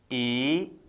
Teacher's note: जीवा आगे आती है, जीवा की टो आगे आती है, नीचे के दांतों से टकराएगी, यानी आगे वाला भाग हिला। इसके बाद है ई, जीवा आगे आएगी, अग्रभाग हिला। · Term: अग्रस्वर